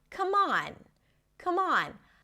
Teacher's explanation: The stress is on the second part of the phrasal verb. And in this case, the m of come becomes the beginning of the next word. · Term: connects